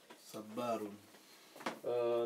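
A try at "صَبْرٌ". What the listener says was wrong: Non, c'est en fait sur la deuxième lettre, tu as dit ba alors qu'il n'y a pas de fatha.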